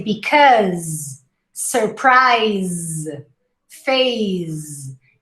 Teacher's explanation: even though it's spelt with an s the final pronunciation is a z so you say because surprise phase the last sound you hear